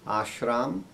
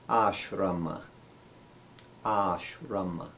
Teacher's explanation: So instead we say ashrama. And in Hindi they drop the final A, but in Sanskrit we'll say it in all these cases. So we'll say, instead of yog, we'll say yoga.